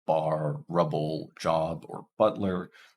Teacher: We have P's voiced counterpart, b. So this one is voiced. In words like bar, rubble, job, or butler, there's usually just one way to pronounce this, although at the end of a word like job, you may not release the B.